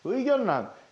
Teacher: 니은과 리을이 만나는데 리을이 니은으로 바뀌는 현상.